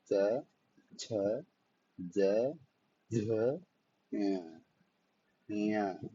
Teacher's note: यह तालव्य वर्ण यानी इनका जो प्रोनाउंसिएशन होता है वह तालु से होता है। तालु इन द सेंस कि हमारी टंग के जस्ट ऊपर वाला पार्ट जो रहता है वो तालु होता है।